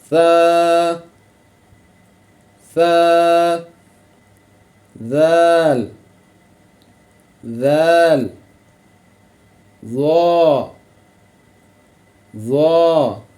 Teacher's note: تو مخرج نمبر 13، زبان کی نوک جب اوپر والے 2 دانتوں کے سرے سے لگے، ٹھیک ہے، تو اس سے سا، زال اور ضا ادا ہوتے ہیں، · سا، زال اور ضا ہیں یہ ان پر سیٹی بالکل نہیں بجنی چاہیے جب ہم نے یہ ادا کرنے ہیں، تو مطلب جیسے سین پہ سیٹی کی آواز نکلتی ہے، تو ان الفاظ پہ ایسی آواز نہیں نکلنی چاہیے، یہ بالکل نرمی سے ادا ہونے والے الفاظ ہیں، ٹھیک ہے۔